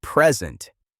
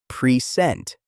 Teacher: If you stress the first syllable, present, it is a noun meaning a gift. If you stress the second syllable, present, it is a verb meaning to show something. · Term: word stress